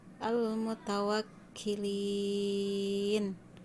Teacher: mad arid disukun karena mad tabi'i dibaca waqaf. Itu panjangnya harus 6 harokat.